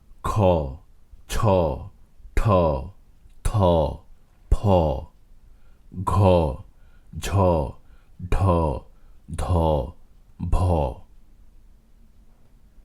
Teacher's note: যে সকল বর্ণ বা ধ্বনি উচ্চারণের সময় ফুসফুস তাড়িত বায়ু বেশি পরিমাণে দ্রুতলয়ে প্রবাহিত হয় সে সকল বর্ণকে মহাপ্রাণ বর্ণ বা মহাপ্রাণ ধ্বনি বলে বর্গের দ্বিতীয়